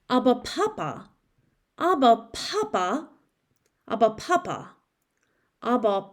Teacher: it should include a voiced a voiceless and an aspirated bilabial plosive